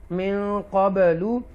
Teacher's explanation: یہاں پر من نون ساکنہ کے بعد اکفا لیٹر ہے قاف، تو لہذا گنہ کریں گے، اور اس کے بعد قاف کے بعد با ساکنہ آیا ہے حروف قلقلہ میں سے، تو قلقلہ کریں گے